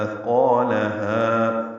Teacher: اثقالها مثلا نرمی سے ادا ہوگا، قاف پر الف مدہ ہے اور ہا بھی الف مدہ ہے۔ اثقالها، قاف اور ہا دونوں برابر دو دو حرکات لمبے کرنے، الف مدہ مد اصلی۔